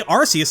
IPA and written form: 'ɑrsiəs (Arceus)